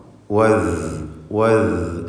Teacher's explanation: അതിൻ്റെ മഖ്റജാവട്ടെ നാവിൻ്റെ അറ്റത്തിൻ്റെ മുകൾ ഭാഗവും മേലെ മുൻപല്ലിൻ്റെ അറ്റവുമാണ്. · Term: റഖാവ